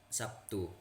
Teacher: Misal, kata Sabtu dalam bahasa Indonesia lazim diucapkan Sabtu pakai P, di mana terlihat bunyi B berubah menjadi P sebagai akibat pengaruh bunyi T yang tak bersuara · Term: asimilasi